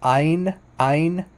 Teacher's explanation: In modern Hebrew, it's just pronounced like Ain. Ain. It's not guttural. It's not guttural at all. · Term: letter Ain